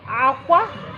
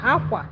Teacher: If I'm going up, aqua. If I'm going down, aqua.